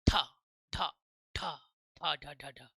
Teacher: Total 39 यानी 37 अगर हो चुके हैं आपके ठीक है तो दो और बचेंगे आपके उत्क्षिप्त होते क्या है जिनके उच्चारण में जीभ पहले ऊपर उठकर मूर्धा को स्पर्श करे मूर्धन तालव्य नीचे होता सॉरी तालु नीचे होता हां यह ऊपर जीभ हमारी ऊपर उठे है ना और मूर्धा को क्या करे टच करे और टच करने के बाद झटके के साथ नीचे आए। जीभ तेजी से ऊपर उठे और मूर्धा जीभ के पो ऊपर वाले पोशन को टच करें और तेजी से नीचे आ जाए तो हम उसको बोलते हैं उत्थ ठ ठ ठ ढ ठ ढ।